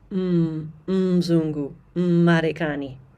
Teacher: Don't make that mistake of saying mu at the beginning of words that start with M. Ma. Notice the double M sound in the beginning.